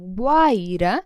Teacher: Então, Guaíra, a gente vai acentuar, tá bom? Porque é um caso de ditongo crescente. Primeiro tem uma semivogal, depois uma vogal.